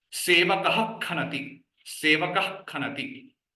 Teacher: Pronounce those visarga differently. Not full visarga, but only half visarga.